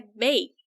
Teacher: O passado de bake é baked. E veja que esse E e esse D tem um som de T, porque aqui eu tenho uma consoante muda.